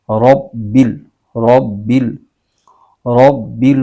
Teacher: बा पर तशदूद और त शदीद भी है इसको जमा के पढ़ेंगे